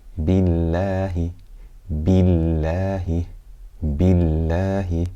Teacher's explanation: Billahi. We have lam here in the name of Allah, but it's light because it has a kasrah before it. Billahi. Billahi.